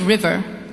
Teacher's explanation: We make it sound very hard indeed. But English R is soft and round. Roll your tongue back inside your mouth. Do not let it touch the roof.